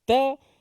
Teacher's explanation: Adapun huruf kaf dan huruf ta, ia hanya nafas saja yang keluar. Tak boleh ada yang kata huruf ta ni kena sebut ca, ci, cu. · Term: hamas